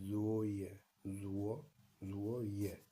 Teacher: First one is falling tone and the last one is also falling tone.